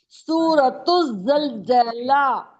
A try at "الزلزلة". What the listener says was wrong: زلزلہ نہیں، زا زبر زا